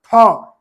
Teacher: हमारे मुख से जो है मतलब टकराते हुए भारी मात्रा में हवा निकल रहा है गर्म हवा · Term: महाप्राण